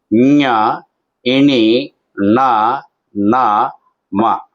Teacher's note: అలాగే 5 వర్గాల్లో ఉన్నటువంటి 5వ అక్షరం ఏదైతే ఉందో వాటిని అనునాసికము అంటారు. అనునాసికము అంటే ముక్కుతో ఉచ్చరించబడేటటువంటి అక్షరాలు